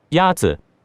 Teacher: Yazi is pronounced with a first tone.